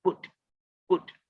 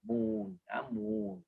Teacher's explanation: short u is put put but the long u you must drag it double the time